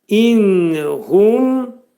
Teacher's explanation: Və in hum və burada dodaqlar qönçələnəcək və ə deyiləcək. Və in nun hərfi burunda deyiləcək. İzhar edirik.